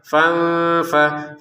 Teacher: Asr aina di sini fanfajar. Perhatikan nun sukun bertemu fa disamarkan